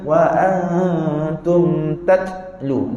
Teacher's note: Huruf ta kita, dia ada angin, tapi angin dia tak boleh lama. Dia kena putus.